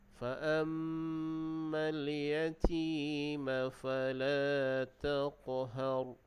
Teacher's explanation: Kemudian ada qalqalah pada huruf qaf. Taqhar, huruf qaf itu qalqalah sughra, dan ra itu dibaca dengan tebal